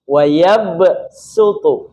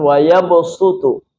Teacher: Mengganti bunyi shad menjadi sin. Dalam qiraat kita, Hafaz membacanya dengan sin. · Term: badal